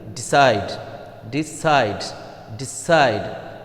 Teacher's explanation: So, the stress will fall on the second syllable side.